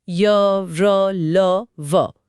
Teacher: जिन्हें बोलते समय हवा मुंह के अंदर ही स्थित रहती है, न पूरी तरह रुकती है न पूरी तरह खुली रहती है। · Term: अंतस्थ व्यंजन